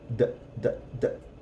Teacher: In English, it's formed in the throat, but in Spanish, it's at the tip of the tongue. So it's going to sound more like a very soft D when it's in the middle of a word. It's more like you're touching a D with your tongue and then getting off of it.